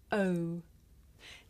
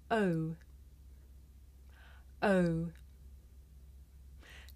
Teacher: this is a diphthong a double vowel sound the shape the mouth makes changes from the beginning of the sound to the end it's pronounced oh did you notice how my mouth changed shape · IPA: /əʊ/